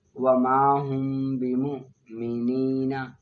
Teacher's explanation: اخفاء شفی میم ساکن کو اس کے مخرج میں چھپا کر پڑھنا